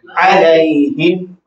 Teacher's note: عین حلق سے ادا ہوتا ہے وسط حلق سے